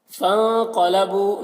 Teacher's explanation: نون کی آواز کو ناک میں چھپا کر ایک الف کی مقدار کھینچ کر پڑھنا ہے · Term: اخفا